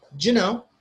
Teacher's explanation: do you is not stressed, so they combine it together, they link it, it becomes do.